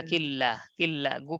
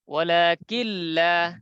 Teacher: গুন্না ছাড়া মিলিয়ে পড়তে হয় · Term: বেলাগুন্না